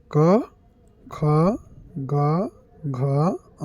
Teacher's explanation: क्वर्ग ये पूरा के पूरा हम लोग के कण जो अ जब हम लोग बोलते हैं तो जीभ का पिछला हिस्सा हमारे कंठ को छूता है · जिन वर्णों के उच्चारण करने पर जीभ का पिछला हिस्सा हमारे कंठ को छूता है उसे कंठस्थ व्यंजन कहते हैं। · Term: कंठ व्यंजन